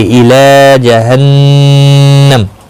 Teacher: الی لام کے اوپر کھڑی زبر ہے، ایک الف کی مقدار کے برابر کھینچ کر پڑھیں گے۔ نون مشدد پر غنہ ہوگا، میم ساکن رہے گا، وقف کی صورت میں، ملانے کی صورت میں اپنی حرکت کے ساتھ پڑھا جائے گا۔